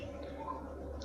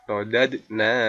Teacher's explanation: Radad. Nah, ini dibaca qalqalah. Dal di sukun. Qalqalah. Dalam satu kalimat berarti qalqalah sughra.